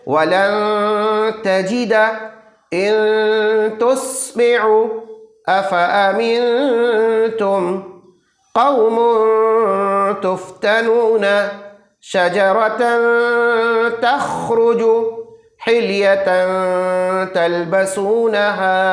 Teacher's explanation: इनमें से कोई भी एक हरफ तनवीन या नून साकिन के बाद आए तो तनवीन और नून साकिन की नून की आवाज़ को गुन्ना के साथ खींच करके पढ़ेंगे, उसी को इख्फा कहते हैं।